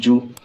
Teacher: जिम पेश जू, जिम के ऊपर पेश है, ज़बर ज़ेर पेश को जल्दी पढ़ेंगे, थोड़ा भी ना खींचेंगे, पेश की आवाज़ आगे को जाती है और होंठ गोल होते हैं। मारूफ पढ़ेंगे और मजहूल आवाज़ से बचेंगे।